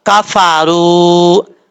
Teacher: کاف زبر کا، فا زبر فا، را و پیش رو، کفارو، کاف بریک ہے، اس کا مخرج ہے زبان کی جڑ اوپر والے تالو کے سخت حصے سے لگے تو کاف پڑھا جاتا ہے